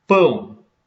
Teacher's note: aqui nós temos o A, núcleo da sílaba, uma vogal, o com som de U, semivogal.